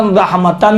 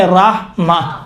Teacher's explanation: وہ تو اگر آخر کلمہ میں اس طرح سے تا گرد ہو، اس کے اوپر دو زبر ہو، تو وقف کے دوران اس تا کو تبدیل کرتے ہیں کس میں؟ ہا میں، ہا سخت میں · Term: وقف ابدال